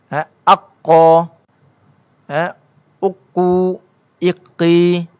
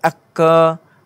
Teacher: Bila kita buat standar sabdu aqa, kita akan rasa tekanan pangkal akhir lidah kita ini memang dia menaik ke arah langit lembut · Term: huruf qaf